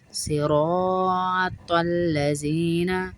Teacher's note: صراط الذین، زی نہیں پڑھیں گے، سختی سے نہیں پڑھیں گے، سیٹی اور سختی نہیں آئے گی، یہ زال نرمی والا حرف ہے. صراط را کو پر پڑھیں گے، موٹا پڑھیں گے، زبر والا را ہے